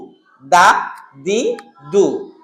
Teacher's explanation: দাল হলো জিহুবার আগা সামনের দাঁতের পেট থেকে বা সামনের দাঁতের গোড়া থেকে উচ্চারণ হয়